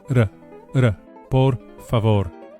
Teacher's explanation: Each of the final r's is lightly flipped with the very tip of the tongue. Just behind and above the front teeth. The very same tongue placement as an English d, but with the lightest and briefest [music] of touches to produce the flipped Spanish r, r, r, por favor.